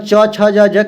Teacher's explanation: च है जो इसको तालु के आधार पर किया गया है। इसको तालु व्यंजन बोलते हैं।